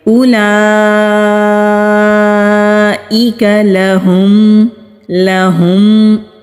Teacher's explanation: اقصی حلق سے یہ ہا ادا ہوتا ہے، یعنی کہ جو ہمارے سینے کی طرف حلق والا حصہ ہے وہاں سے یہ ہا ادا ہوگا۔ میم ساکن پر اظہار ہوگا، یعنی کہ میم کی آواز کو کلیئر ادا کریں گے۔ اولئک لہم، لہم، لاہم نہیں کریں گے، لہم جنات، جیم کو نون کے ساتھ مضبوطی سے ملائیں گے، نون کے اوپر تشدید ہے۔